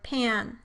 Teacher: the velum typically lowers early, resulting in a nasalized vowel, like in the word pan.